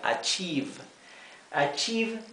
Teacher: esta combinación de letras la i con la e se pronuncia I una I larga